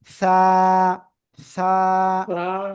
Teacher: সবাই জিহ্বার আগা, সামনের উপরের 2 দাঁতের আগায় লাগান, লাগান লাগান, লাগিয়ে নরম করে হালকা বাতাস বের করবেন। বের করে আপনি এটা উচ্চারণ করবেন।